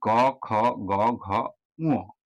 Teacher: জিহামূলীয় বর্ণ হলো জিহা মূল কণ্ঠের কাছে যদি নরম তালুকে স্পর্শ করে উচ্চারণ হয়, তাহলে সেই ধ্বনিগুলোকে বা বর্ণগুলোকে আমরা জিহা মূলীয় বর্ণ বলবো।